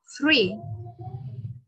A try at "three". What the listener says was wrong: Three. Không phải tree đâu nhá, không phải tree. Nếu mà con đọc là tree thì nó lại nghe giống cái cây á. Rồi, thế bây giờ mình phải đưa hai âm này khác nhau ở điểm nào?